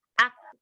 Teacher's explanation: huruf kaf itu punya sifat syiddah dengan hams, di mana syiddah itu tertahan suaranya, sedangkan hams mengalir udaranya.